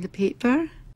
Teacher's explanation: paper that extra glottal catch the paper that's very classic scottish there are lots of glottal catches lots of little stops in scottish accent